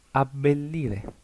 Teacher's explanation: la doble consonante en italiano es el sonido de la misma consonante, pero más larga